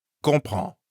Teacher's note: We've already learned that French loves nasal sounds, like in plan, train, and bon. And comprend has two nasal sounds, con and prend.